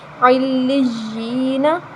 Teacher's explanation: یا کے آگے جو یا ہے وہ مدہ ہے، کیونکہ یا ساکن سے پہلے زیر آ رہی ہے تو یا مدہ، اس کو ہم ایک الف کے برابر لمبا کریں گے